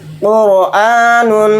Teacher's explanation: قرآن، قاف را پیش قر، حمزہ کھڑا زبر آ، قرآ، نون دو پیش نون، قرآن، رائے ساکنہ سے پہلے پیش آ گیا تو اس رائے ساکنہ کو بھی موٹا یعنی پر پڑھیں گے۔